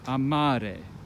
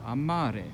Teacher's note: the stress is falling on the second last syllable